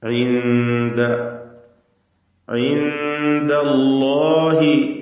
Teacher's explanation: സാക്കിനത്തായ നൂൻ ശേഷം ദാല് ഇഖ്ഫാ ഹഖീഖിയാണ്, മറച്ചു മണിച്ച് നൂനിനെ ഉച്ചരിക്കുക. ഇൻദ ഇൻദല്ലാഹി ഈ ഇഖ്ഫായിൽ ഇൻദ എന്നിങ്ങനെ വായ തുറന്നു പോകുന്നൊരവസ്ഥ വരരുത്.